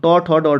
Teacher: जिन वर्णों के उच्चारण में जिह्वा का अग्रभाग कठोर तालु के अग्रभाग से टकराता है, मूर्धन्य वर्ण कहलाते हैं।